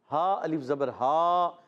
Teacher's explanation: ہا کی ادائیگی حلق کے نیچے والے حصے سے